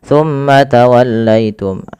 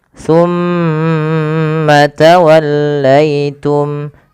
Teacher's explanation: Pada lafal summa ditahan dulu. Lafal mimnya ditahan. Jangan langsung dilepaskan.